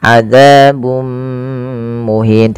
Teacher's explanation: Yang ini kita namakan dengan bacaan idgham bi gunnah. Yaitu cara membacanya memasukkan tanwinnya kepada mim dan ditahan. Adzabun muhin, tidak dibaca adzabun muhin.